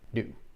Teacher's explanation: Kids will often stop the airflow, and this is how zoo is turned into do.